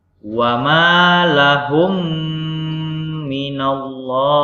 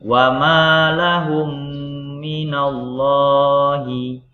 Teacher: mim pertama mati, mim kedua hidup, maka dibaca 2-3 harkat. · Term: idgham mimi